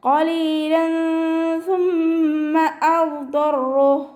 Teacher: ലാമിൻ്റെ തെൻവീനിൻ്റെ സൗണ്ടിനെ വ്യക്തമായിട്ട് കേൾപ്പിക്കാതെ മറച്ചു വെക്കുക. അതോടൊപ്പം തന്നെ മണിക്കും ചെയ്യുക. · തെൻവീനിലുള്ള നൂനിൻ്റെ സൗണ്ടിനെ മറച്ചു വെച്ചിട്ട് മണിച്ചോതി കൊടുക്കുക